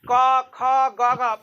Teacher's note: क ख का उच्चारण स्थान कंठ हुआ